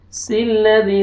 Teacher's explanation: आपने अलिफ के ऊपर ज़बर नहीं लगाना, सीन को लाम के साथ मिलाएंगे।